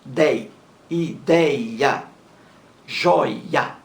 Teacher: Ideia, a sílaba mais forte aí é dei, é a penúltima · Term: palavras paroxítonas